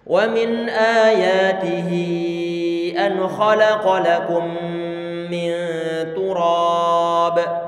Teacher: Maka nanti untuk model hi semacam ini bacaannya perlu ditambah, diberikan huruf ya. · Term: matsilah tawilah